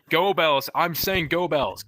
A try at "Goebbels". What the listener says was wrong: No, it's Goebbels, not Doorbells. Doorbells. I know of no philosopher called Doorbells, man. But his name is Goebbels.